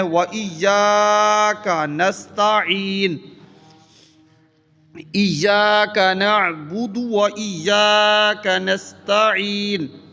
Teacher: ایاک لفظ نہیں ہے، یا کے بعد الف مدہ ہے، اس کو پڑھنا ہے، لمبا کرنا ہے